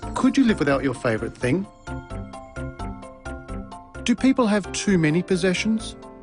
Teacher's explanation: Did you notice the pitch of his voice rise at the end of the questions? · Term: Rising intonation patterns